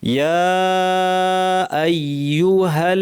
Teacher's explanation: হা গিয়ে সরাসরি লামকে ধরবে। ইয়া আইয়ুহাল্লাযীনা, নাকে টানবো না।